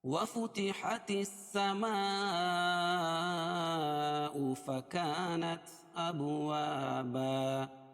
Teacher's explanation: السما مد متصل ہے اس لیے کہ حروف مدہ کے بعد حمزہ اسی کلمے میں ہے تو مد متصل ہوگا. فکا، الف مدہ، الف سے پہلے زبر اس لیے الف مدہ.